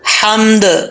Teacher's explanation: ہا بریک ہے، اس کا تعلق حلق سے ہے